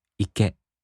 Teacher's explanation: In the flat-type verbs, even if they turn into the imperative form, they have no accent. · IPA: [ike]